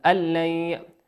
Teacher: واللام من حروف الإدغام بغير غنة، يدغم الحرف من غير غنة، من غير غنة.